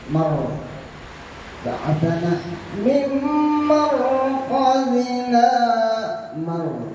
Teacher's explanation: ro mimar itu tebal, ro-nya tebal karena didahului baris di atas, dan di belakang ada di atas juga.